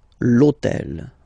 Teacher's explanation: in French we don't pronounce H, okay, so basically the first sound of the word is the vowel O